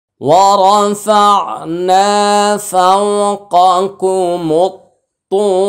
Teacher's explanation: রটা ওয়াকফা করলে সাকিন হবে মোটা হবে